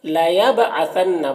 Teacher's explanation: با میں قلقلہ ہو رہا ہے، با کو پڑھتے وقت اس کی آواز ٹکرائے گی۔ عَثَنَّ، نون مشدد ہے، یہاں پر غنہ ہوگا۔